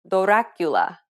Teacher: You want to focus on the D and R sound in the word Dracula. This very quick transitioning from the D to the R can sometimes allow you to pronounce the rolled R sound.